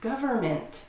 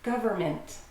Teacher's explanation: You don't need to try to pronounce the N. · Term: Silent N